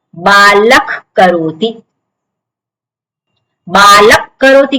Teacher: વિસર્ગ પછી ક છે કકાર છે એટલા માટે વિસર્ગનો ખાર એવું ઉચ્ચારણ કરવાનું